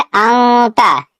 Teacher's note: अब इस नून की आवाज जो आ रही है वो नाक में छुपा कर पढ़ना है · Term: इख्फा